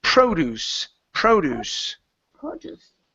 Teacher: Yeah, the stress is at the very beginning. Now, the difference here, this is a noun.